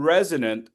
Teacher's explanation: The S in resonant sounds like a Z. It's voiced resonant.